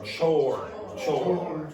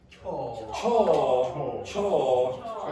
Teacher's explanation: remember the English do not pronounce that R sound very much